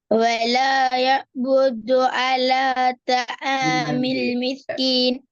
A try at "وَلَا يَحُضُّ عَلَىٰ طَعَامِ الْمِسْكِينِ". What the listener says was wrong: எங்க வலா யாபுதுல இது ஈகத்தை பார்த்து ஓதுங்க